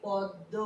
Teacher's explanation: তাহলে এই যে দটা কিন্তু আগে আছে, দটা আগে আছে, মটা পরে আছে। তাহলে পূর্ববর্তী ধ্বনিটা পরবর্তী ধ্বনিকে পরিবর্তন করে নিজের মতো করে নিয়েছে উচ্চারণের সুবিধার জন্য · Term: প্রগত সমীভবন